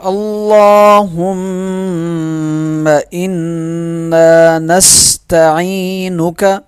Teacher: اللہم، لام پہ تشدید ہے، لام موٹا پڑھا جائے گا، ایک الف کے برابر کھینچ کے پڑھا جائے گا، میم پہ غنہ کیا جائے گا، نون پہ غنہ اور ایک الف کے برابر اسے کھینچ کے پڑھا جائے گا